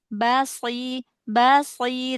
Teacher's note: Bnya tipiskan dulu. Shadnya baru tebal.